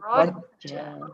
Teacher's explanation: pastikan ra berbaris atas kita bacakan tebal